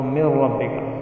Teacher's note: جیسے من ربک، من ہے نون ساکن ہے، را آ گیا تو من ربک، تو نون ساکن کی آواز اس میں ضم ہو گئی، یعنی ختم ہو گئی، سائلنٹ ہو گئی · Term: ادغام